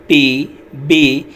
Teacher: जब हमने अपने अपर लिप और लोअर लिप को प्रेस किया तो तब ये साउंड प्रोड्यूस हुई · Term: बाइलेबियल साउंड्स